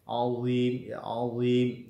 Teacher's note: sebagian besar lidah kita, ya, naik ke langit-langit mulut kita, ya. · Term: huruf itbaq